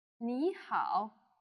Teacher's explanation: Wow in Chinese you will learn that there are four tones the two words used here happen to be in the third tone which means they have a falling rising tone so you would say me and how me how can you